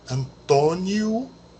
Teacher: a gente fala u no lugar do o no final esperando por exemplo a palavra Antônio seria antono e nunca Antônio